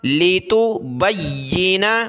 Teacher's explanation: با کو یا کے ساتھ ملایا، یا کو سخت کریں گے تشدید کی وجہ سے